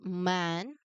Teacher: You start with the lips closed, feel the vibration in your nose, and then open it into the vowel.